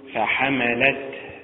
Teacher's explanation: النبر فيها على حركة اللام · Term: متعل